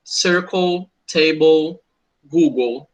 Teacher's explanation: quando eu tenho uma consoante mais LE, ele sempre vai ter o som de O